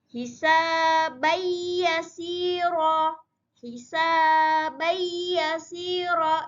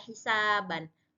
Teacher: Tidak dibaca hisaban, tidak boleh dibaca hisaban karena dia idgham bi gunnah. Ya adalah huruf bi gunnah, maka hisabayyasira seakan-akan ada tasdidnya.